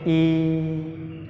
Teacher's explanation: आपको पता चलेगा कि जीभ के अग्रभाग पे सबसे ज़्यादा दबाव पड़ रहा है और अग्रभाग जीभ का सक्रिय रह रहा है।